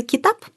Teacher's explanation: Например, слово «китаб», знакомое всем нам, обозначающее «книга», используется «а» твердое и «и» мягкое.